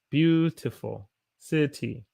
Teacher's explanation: a t is a flat t between two vowels